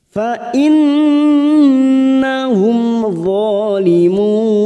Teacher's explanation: Dha fathah berdiri atau alif kecil 2 harokat kita panjangkan. Zalimun, limun, mat arid disukun 4 harokat kita panjangkan.